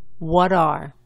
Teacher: Tienes la W inglesa más la A española con un poco de la U antes. La T en este caso suena más como la T española que la T inglesa. La inglesa se pronuncia típicamente colocando la punta de la lengua un poco más para adelante. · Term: la T es la española